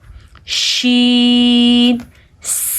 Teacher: شین زبان کے کنارے جب اوپر دانتوں سے ٹکراتے ہیں تو شین ادا ہوتا ہے۔